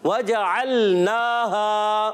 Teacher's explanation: نون پر کھڑا زبر ہے، ایک الف کھینچ کر ادا کریں گے